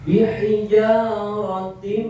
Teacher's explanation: tanwin kasrah tersebut dimasukkan ke huruf mim. Jadi berubah suaranya langsung m bihijaratim. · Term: Idgham